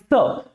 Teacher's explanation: स प्रेशर कहां से आया? दांतों के बीच से आया, इसीलिए इसको दंत स के नाम से जाना जाता है।